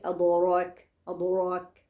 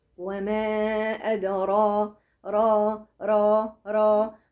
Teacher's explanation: بنطق الراء وشفتيني في وضع الانبساط الطبيعي، مفيش فيهم أي اتجاه للضم خالص